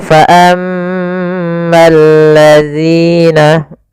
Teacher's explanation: Kemudian fa ammal ladzina, di sini ada alif lam, yaitu kita namakan dengan alif lam syamsiyah, yaitu alif lam yang ditulis tapi tidak dibaca, sehingga ini langsung ke huruf lam yang ketiga. Ya, al ketemu lam, maka bergabung menjadi lam yang ditasydidkan.